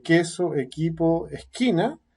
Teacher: se adelanta un punto se articula un poquito más adelante